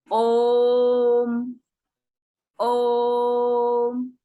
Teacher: तो ऐसे स्वरों के उच्चारण में ह्रस्व स्वरों की अपेक्षा 3 गुना समय लगता है, 3 मात्रा का समय लगता है। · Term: प्लुत स्वर